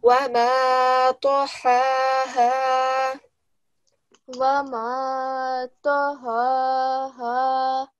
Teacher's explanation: whenever you come across ta, you know that we need to give it a circular round mouth because it is a thick letter